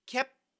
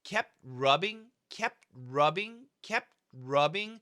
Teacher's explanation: and then inside the mouth we'll go to the T so I stopped the P kept and then inside the mouth I moved the tongue to the T position